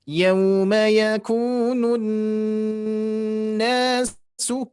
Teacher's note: jadi dengungannya ditahan sedikit lagi. Tidak terlalu cepat.